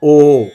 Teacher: dravidan languages that we hear we have heard short o but in Sanskrit only there is a long o that's a combination of a and u